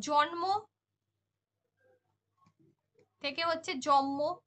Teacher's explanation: ব্যঞ্জন ধ্বনির প্রভাবে পূর্ববর্তী ব্যঞ্জনের পরিবর্তিত হচ্ছে